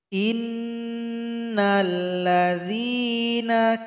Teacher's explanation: ada Nun yang bertasydid maka didengungkan juga